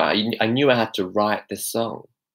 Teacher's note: he's using the glottal stop T